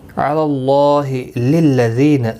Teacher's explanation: ذی یا مدہ ہے، ایک الف کی مقدار کے برابر کھینچ کر پڑھیں گے